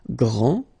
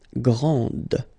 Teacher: This final D is not pronounced.